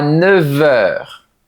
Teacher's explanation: La lettre F se prononce alors comme un V.